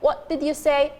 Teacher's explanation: What did you say? There is a glottal stop.